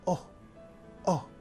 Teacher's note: as in the word Coke and this vow is called AUM actually Israelis pronounce the O rather in a shorter way · Israelis pronounce the cholam O rather in a shorter way, almost like oh, oh.